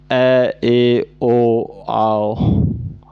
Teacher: इन स्वरों के उच्चारण में आधा मुंह खुलता है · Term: अर्धविव्रत